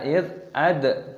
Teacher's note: dalnya berharokat sukun maka dikolkolah, dipantulkan suaranya